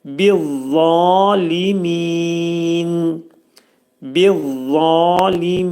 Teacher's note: Za qalın hərfdir. Dil damağa dəyər dəyməz vəziyyətdə qalın za səsini deyirik.